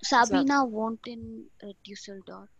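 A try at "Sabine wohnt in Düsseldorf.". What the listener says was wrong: Yeah, it's very clear.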